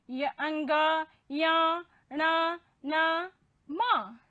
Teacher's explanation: इनके उच्चारण में श्वास हमारी जो है वो अंशतः नासिका से बाहर निकलती है। श्वास हमारी नासिका से अंशतः, पूर्ण रूप से नहीं, अंशतः बाहर निकलती है। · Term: अनुनासिक वर्ण